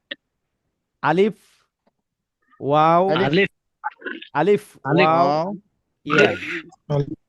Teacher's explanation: মুখের খালি জায়গায় উচ্চারিত হয় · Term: মাদের হরফ